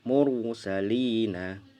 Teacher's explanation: Ada pelajaran ra tafkhim. Ra dibaca tebal jika yang ketiga ra sukun didahului huruf berharokat fathah atau dhammah